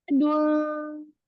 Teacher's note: Lidahnya turun, ainnya fathah, lalu ketemu alif. Berarti dia di makhraj al-jawf.